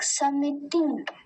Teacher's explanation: हमें बस जो दो ह्रस्व इकार है उसका ध्यान देना है। अब इसे लंबा नहीं खींचेंगे, लंबा खींचने पर ये दीर्घ इकार बन जाएगा।